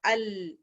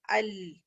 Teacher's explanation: تو لام میں کیا ہوتا ہے مخرج بھی بند ہو رہا ہے مگر آواز بھی ٹریول کر رہی ہے, تو اس لیے تھوڑا ٹائم لیتا ہے. جب سکون آتا ہے ال تھوڑا لمبا ہو جاتا ہے ال, ایسے ہلکا سا, یہ نہیں کہ آپ یہ کریں ال, نہیں, تھوڑی اس کی صفت ہے تھوڑی لمبا ہونا ہے, تھوڑا ٹائم لے گا ال, اس کی نیچرل وائس ہے.